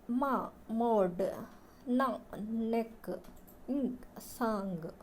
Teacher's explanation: made by releasing sound through the nose. Nostrils are M, N, ing.